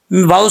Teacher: लाम साकिन है इसमें कलला नहीं करना